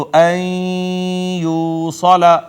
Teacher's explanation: से है और मा कबल आ गया है नून साकिन लिहाजा या ने मा कबल नून साकिन को अपने अंदर जम कर लिया इदगाम हो गया और इदगाम भी वो जो गुना के साथ होता है तो अ यू सला यहां पे इदगाम बिल गुना हुआ है